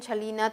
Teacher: tenemos la na, que es una nasal alveolar, y es como fue también la lateral y la vibrante, también es sonora.